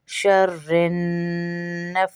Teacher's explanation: فا اور سا کو کھینچیں گے کیونکہ کھڑا زبر ہے ان کے اوپر ، شَرِّ النَّفَّاثَاتِ، فا اور سا کھینچ رہے ہیں، سا ہے،